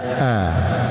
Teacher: yang pertama di ujung kerongkongan itu di tempatkan huruf alif atau hamzah dan ha